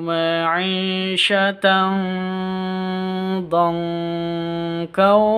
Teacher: nun sukun bertemu dengan dod, bacaan ikhfa hakiki, samar disertai dengung.